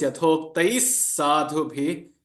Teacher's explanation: Yathoktaihi, it becomes, because the following consonant is sa, it takes on the same pronunciation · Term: visarga